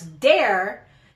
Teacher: I'll change the TH of the beginning of a word to a D instead of a TH sound